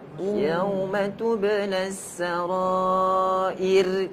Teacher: Dia punya raw tu bunyi getaran ni kena kurang lagi.